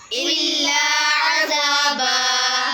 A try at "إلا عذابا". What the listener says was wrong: हमजा के ऊपर आइन नहीं निकालनी इल्ला अज़ाबा